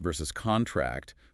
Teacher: contract with the stress on the second syllable which is the verb meaning to get smaller.